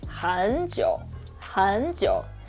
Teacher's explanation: both are with the third tone, so we know this means that 很 should change to the second tone.